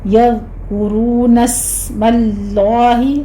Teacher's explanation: سین پر سیٹی کی آواز کے ساتھ ہمس ہوگا، آگے لفظ جلالہ کو پر پڑھیں گے۔